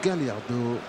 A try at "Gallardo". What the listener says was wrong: On prononce Gajardo en argentin. Non, mais nous on dit bien Marcelo Gallardo, il n'y a pas de souci. Là, c'est de l'argentin. En espagnol, on dirait Gallardo.